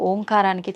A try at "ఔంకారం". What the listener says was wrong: అది ఓంకారం కాదు, ఔంకారం. మీరు మనం పలకడమే దాన్ని తప్పు పలుకుతున్నాం. అకార ఉకార మకార అర్ధమాత్ర ఇది ఓంకార. ఔం అని ఉచ్చరించినప్పుడు అకారము ఉకారము రెండూ పలకబడి మూకారం దీర్ఘమవుతుంది.